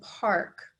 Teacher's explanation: notice that in park, I don't hear the short A. It makes a new sound. It's that pirate sound of R. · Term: R controlled vowels